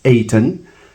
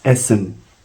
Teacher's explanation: English and Dutch belong to the same family of Low German, and that's the reason why they have not been able to spirantize t into s